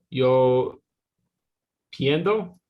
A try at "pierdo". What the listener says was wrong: You're changing the R to an N for some reason. Pierdo. Pierdo.